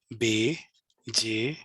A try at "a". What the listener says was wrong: आ की आ वाली आवाज नहीं आई आपकी।